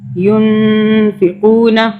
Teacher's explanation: تو یہاں پہ جزم والے نون کے آگے فا کا جو حرف ہے یہ اخفا کے حرف میں سے ہے، اور اس نون پہ ہم اخفا کریں گے، یعنی کہ 2 سیکنڈ کے لیے غنہ کریں گے. ینفقون، نون ساکن ہے، اس کے آگے اخفا کا حرف ہے، ہم یہاں پہ غنہ کریں گے.